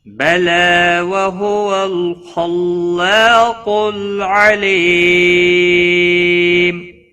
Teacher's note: خا حروف مستعلیہ میں سے ہے، پور پڑھا جائے گا